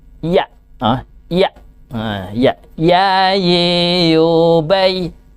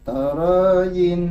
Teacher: Maka persamaan antara ya dengan samanya adalah jim dan shin, berarti ya itu adalah diambil dari, keluar dari tengahnya lidah